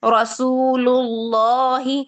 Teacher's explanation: اس میں بھی اللہ کے لام کو موٹا پڑھیں گے